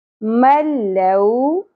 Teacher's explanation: نون ساکن کے بعد لام آ گیا تو یہاں پر ادغام بغیر غنہ ہوگا